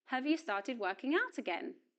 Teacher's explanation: In the yes-no question, the auxiliary verb have does not receive stress, and the vowel sound of the word is pronounced So this auxiliary verb is pronounced in weak form, have.